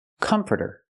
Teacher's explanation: It's not the ah sound like hot and stop. It's the sound like cup and up. Closed and relaxed.